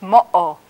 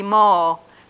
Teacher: it's pronounced like the little catch in your throat when you say uh-oh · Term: glottal stop